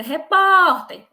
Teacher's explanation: o mais forte é o pó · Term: sílaba tônica